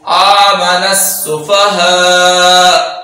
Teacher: جب ہم وقف کریں گے تو حمزہ کو ساکن کر دیں گے